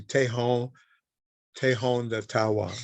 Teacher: both of those vowels that come before an N are nasalized